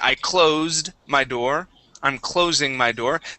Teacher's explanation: The verb to close the door, okay, I closed my door, I'm closing my door, that's going to have a voiced S on it